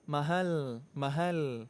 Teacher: ujung lidah ketemu dengan langit-langit bagian depan, nggak sampai menyentuh gigi seri atas. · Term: lam bahasa Al-Quran